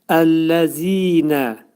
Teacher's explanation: Zəl hərfinin yəni məxrəci dilin ucu iki dişin arasına xəfifcə girərək pəltək zə şəklində deməyə çalışmaq lazımdır. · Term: Pəltək zə hərfidir, pəltəy zə